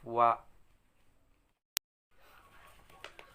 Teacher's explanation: bertemunya antara bibir atas dan bawah namun sedikit rongga, keluar darinya huruf wa